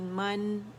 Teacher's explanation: اب من میں ہم نے کیا کیا؟ زبر کے لیے جبڑا کھولا اور کھلے جبڑے کے ساتھ اوپر سے نون ملایا